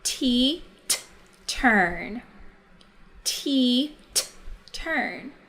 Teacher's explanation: when we say the t sound, our tongue touches the tip of our teeth, the back of our teeth. We can feel it t as we say that sound.